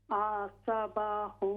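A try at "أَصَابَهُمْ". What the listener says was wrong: असा, लंबा कीजिए, असाबहुम,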